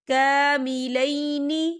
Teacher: یا ساکن ہے اور یا ساکن سے پہلے زبر ہے تو یہاں پر یا لین ہو رہا ہے تو ہم اسے بالکل نہیں کھینچیں گے